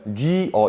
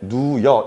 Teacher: 우랑 이가 더하면 뉘어 이렇게 되고요. 그 다음에 이랑 어를 합치면 누여 이런 식으로 발음합니다. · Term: 모음 축약